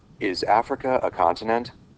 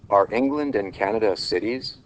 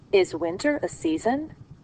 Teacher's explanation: the rising intonation in yes-no questions